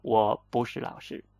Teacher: I changed the 不 from fourth tone to second tone.